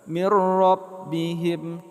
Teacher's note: nun mati bertemu dengan ra idgham bilaghunnah